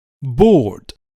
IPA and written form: bɔːrd (bored)